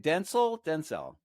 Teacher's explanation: first accent is on the first syllable